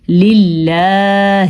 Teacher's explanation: اللہ کے نام سے پہلے اگر زیر ہو تو اللہ کا نام باریک پڑھا جاتا ہے، جبکہ اللہ کے نام سے پہلے زبر ہو یا پیش ہو تو اللہ کا نام پر پڑھا جاتا ہے.